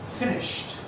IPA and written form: ˈfɪnɪʃt (finished)